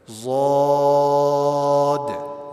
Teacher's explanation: ضاد کو بھی موٹا پڑھا جائے گا اور کھینچ کے پڑھا جائے گا, اس کے اندر مد ہے.